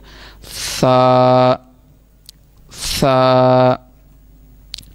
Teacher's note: सा, इसको पढ़ने का जो तरीका है ज़ुबान की नोक और ऊपर के दांतों के अंदरूनी किनारे से। ऊपर वाले जो हमारे दांत हैं उनके अंदरूनी किनारे जो हैं, दोनों दांतों के दरमियान में अगर हमारी आवाज़ ज़ुबान लगेगी तो फिर ही ये सही अदा होगा।